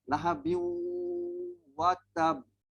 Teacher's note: Yang ini masuk hampir 100. Hampir 100 masuk ke dalam waw itu dan adalah dengung sikit, kita dengungkan dia dan lepas itu lahabiu watab.